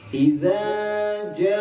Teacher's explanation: Kalau idza yang pertama yang ditipisin itu 2 harkat, sedangkan ja yang ditebelin 5 harkat. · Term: mad wajib